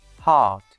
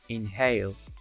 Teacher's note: This sound is produced between the glottis, the space between the vocal cords, hence is called glottal. To describe h, we will say h is voiceless glottal fricative. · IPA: /h/